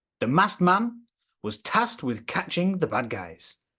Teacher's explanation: So when you get these sounds together, like here, masked and tasked, then k often disappears. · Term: elision of k